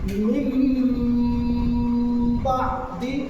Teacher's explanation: با آ جائے تو اس نون کی آواز کو میم سے بدل کر کے غنہ اور اخفا کے ساتھ پڑھیں